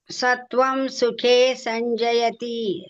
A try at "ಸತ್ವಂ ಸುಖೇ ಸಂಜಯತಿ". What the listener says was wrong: ನೋಡಿ ಎಷ್ಟು ಚೆನ್ನಾಗಿ ಹೇಳ್ತಾ ಇದ್ದಾರೆ